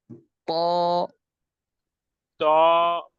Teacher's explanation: তয়ের বৈশিষ্ট্য হচ্ছে তাকে তাফখিম অর্থাৎ ভারী করে পড়তে হয়, যেমন মোটা করে পড়তে হয়। ত ত ত যখন পড়বো আমরা, তখন আমাদের মুখমণ্ডল উপর দিকে যাবে।